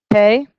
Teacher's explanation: Pronounced like a P, but it's not as popping. It's more of a, it's a much softer P rather than P.